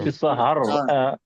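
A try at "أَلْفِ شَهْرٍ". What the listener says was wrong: হার বলবেন না, ফি শাহর। এটা প্র্যাকটিস করেন, শাহ শাহর।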